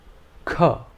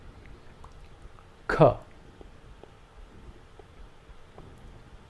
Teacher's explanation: this is an aspirated consonant and the air pressure behind the tongue is released with a little Force